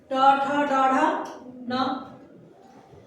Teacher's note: ट का मूर्धा है, और हम अपने टंग को बेंड करते हैं, जीभ को मोड़ते हैं तो टवर्ग होता है।